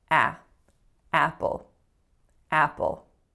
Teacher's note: I want you to pay attention to the tension in the first vowel. So it is not a pure ah sound.